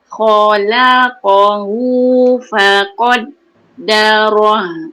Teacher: Yang huruf tebal yang kena masam tu, yang terangkat pangkal lidah bila sebut khalaqahu faqaddarah dan ro yang baris atas.